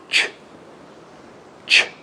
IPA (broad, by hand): ʧ